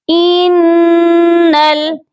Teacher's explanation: یہاں پر دیکھیے نون جو ہے مشدد ہے، یعنی کہ نون کے اوپر تشدید ہے، اور جب بھی نون کے اوپر یہ والا نشان آتا ہے تشدید کا تو نون پر غنہ لازمی کیا جاتا ہے، اس لیے ہم نون پر غنہ کریں گے اور نون کو لام کے ساتھ ملا کر پڑھیں گے